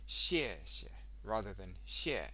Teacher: the first one you say the tone really clearly and the second time you do it as a neutral tone